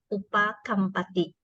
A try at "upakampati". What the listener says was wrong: Upakapati. Upakapati. No M.